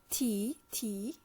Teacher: it is mainly touching the uh upper teeth